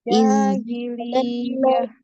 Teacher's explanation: Jahiliyah, tak ada hi panjang ya.